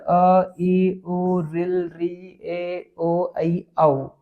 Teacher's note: तो इन सभी का अभ्यांतर प्रत्न जो होता है वो क्या होता है विवृत होता है